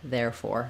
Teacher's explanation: so a little bit of stress on both clear or but main stress on there